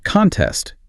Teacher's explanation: The stress is on test.